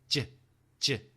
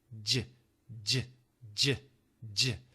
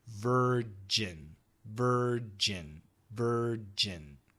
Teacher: with the J sound you cannot make the J very long it's always short J J the sound comes at the front of your mouth behind the teeth